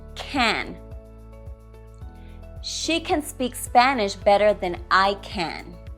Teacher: the first can is the weak form the second can is the full form